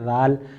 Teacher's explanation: ذال زبان کا سرا اوپر کے دانتوں پر لگانا ہے